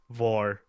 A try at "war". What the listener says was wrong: Again, your accent is causing W and V to come together as one and the same. It doesn't sound like you're saying war. It sounds like you're saying vor. Okay, think of Waluigi.